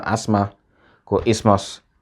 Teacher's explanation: th is silent in words like asthma and isthmus